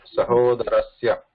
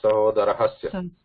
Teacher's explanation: when we pronounce the Shashti Bhakti, there is no visarga, there is no ha at the end